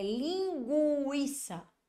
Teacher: na palavra linguiça Olha aí eu não tenho dígrafo por quê Porque eu pronunciei o som do u